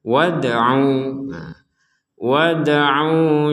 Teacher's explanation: Mim mislihi wad'u syuhada'akum. Ini dal sukun, bacanya sama dengan ba sukun, yaitu dipantulkan.